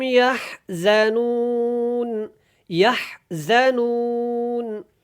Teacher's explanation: زا کو سختی کے ساتھ ادا کرتے ہیں، ہا کو آپ نے حلق سے اور نرمی کے ساتھ ادا کرنا ہے